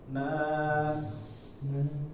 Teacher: Nah, sa-nya dikasih desis.